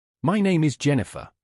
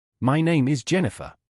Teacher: That rising tone sounds uncertain. Instead, end statements with a falling tone